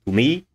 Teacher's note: particles can be unstressed as in english you say to me me here is clearly longer it is clearly higher pitch pitched and at least it should be more strongly aspirated i